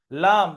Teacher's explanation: জিভের আগের কিনারা সামনের উপরের দুই পাশের দাঁতের গোড়ার সাথে লাগিয়ে উচ্চারিত হয়